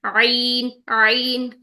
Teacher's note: لیکن آئین جو ہے اس کے لیے اس نے پیچھے جا کر رگڑ کھانی ہے، زبان کو ہم پیچھے کی طرف پریس کریں گے. آپ دیکھ رہے ہوں گے اس میں سیکنڈ پکچر میں زبان کی ڈائریکشن دیکھیے کہ وہ پیچھے کی طرف مضبوطی سے پیچھے کی طرف جا رہی ہے، جس کی وجہ سے یہاں پہ ٹکر ہو رہی ہے اور ساؤنڈ جو ہے وہ رگڑ کھاتی ہوئی نکل رہی ہے.